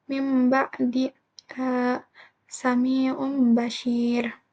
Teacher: Iklab artinya itu mengganti, yaitu mengganti bunyi nun mati atau tanwin menjadi mim, yang disertai dengan dengung jika bertemu dengan huruf ba